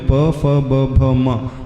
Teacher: होते हैं प वर्ग में प फ ब भ म तो हमारे दोनों होठ का स्पर्श होता है इस कारण इसे ओष कहा जाता है होठों के स्पर्श से